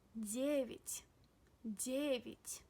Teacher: Ya is unstressed. That's why we pronounce it as E.